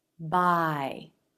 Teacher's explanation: the jaw comes up as the front of the tongue arches towards the front of the roof of the mouth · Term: AI diphthong